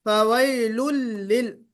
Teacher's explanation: दोनों भी लाम को बारीक पढ़ना है